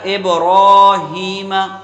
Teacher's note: علی آپ نے پڑھ لیا، ابراہیمہ، تو یہاں پر با میں قلقلہ کریں گے، را کو ایک الف کے برابر کھینچ کے اور را کو پر کریں گے، ہا کو بھی ایک الف کے برابر کھینچیں گے، میم کو بغیر کھینچے پڑھیں گے۔